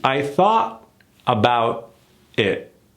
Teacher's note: we're not even attempting to do a t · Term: killed t